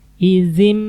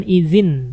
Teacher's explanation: maka huruf nunnya dirubah menjadi Mim ini Nun di atasnya ada mim jadi nunnya kita baca jadi